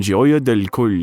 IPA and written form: ˈʤoʊjə dɛl koʊl (Gioia del Colle)